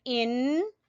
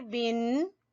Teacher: یہ 2 زبر 2 زیر 2 پیش، یہ پڑھنے میں نون ہی کی آواز آتی ہے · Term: نون کی آواز